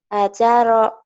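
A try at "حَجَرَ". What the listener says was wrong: Hajaro. Kedengarannya kayak ajaro ya.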